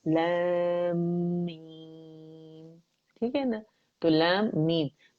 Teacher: मीम साकिन जब मीम में जाता है तो यहाँ पे इदगाम होता है